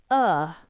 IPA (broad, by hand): ə